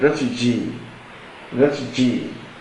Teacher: in the word Refugee stress is on the last syllable